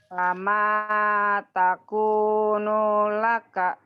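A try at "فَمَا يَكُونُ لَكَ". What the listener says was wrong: Fama yaku bukan taku bukan yaku. Fama yakunu laka.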